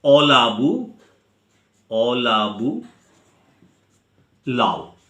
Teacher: অ এই স্বরধ্বনি আদিতে যেটা রয়েছে সেটা লোপ পাচ্ছে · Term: আদি স্বরলোপ